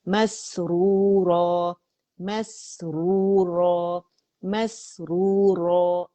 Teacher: یہ را جو دمہ کے ساتھ ہے یہ بھی موٹی ہوگی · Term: را موٹی